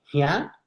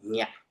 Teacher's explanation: las variantes conservadoras van a tener un glide que junto a una vocal nasal pasaron a ser este segmento palatal nasal, ¿no? Que es la ñ.